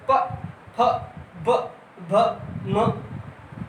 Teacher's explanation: दोनों ओंठ आपस में टच हो रहे हैं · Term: स्पर्शी व्यंजन